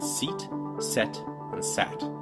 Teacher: your tongue starts out High e goes to the middle of your mouth a and then goes down to ah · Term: tongue placement